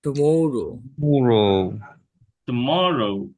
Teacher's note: মতে স্ট্রেস, মরে স্ট্রেস আর কি